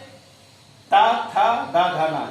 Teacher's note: ता देखिए जीभ दांत से जुड़ रहा है